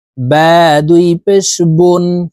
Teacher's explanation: দুই পেশ দিয়ে হরফের উচ্চারণ ঠোঁট গোল করে দ্রুতভাবে উচ্চারণ করব। দেখুন, বা দুই পেশ বুন, ওয়াও দুই পেশ উন, ওয়াও হরফ ঠোঁট গোল করে দুই ঠোঁটের মাঝে ফাঁকা রেখে উচ্চারণ করতে হবে।